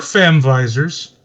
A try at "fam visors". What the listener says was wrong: You said I heard you say that of an N instead of an M for family. It's like you said fan visors.